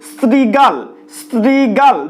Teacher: দেখো দাঁতের সাথে জিভ স্পর্শ করছে স উচ্চারণের সময়। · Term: দন্ত স